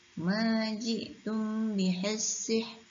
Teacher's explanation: Maka kita sebut ra tu sebagai sebutan yang nipis.